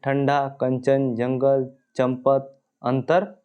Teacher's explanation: के ऊपर एक बिंदी जो रहता है उसको अनुस्वार कहते हैं अनुस्वार के उच्चारण में वायु नाक से निकलती है और उच्चारण झटके के साथ होता है